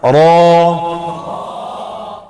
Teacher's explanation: ہونٹ گول نہ ہوں، غور کریں رو